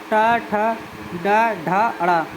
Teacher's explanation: आते हैं ट ठ ड ढ ड़ ये मूर्धा मूर्धा जी जीव जो है मूर्धा को स्पर्श करती है इनको बोलते समय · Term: मूर्धन्य वर्ग